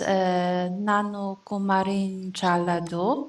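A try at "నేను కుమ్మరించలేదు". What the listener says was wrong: Yeah, it is nenu kummarinchaledu. Nenu kummarinchanu, nenu kummarinchaledu, nenu kummarinchana, nenu kummarinchaleda.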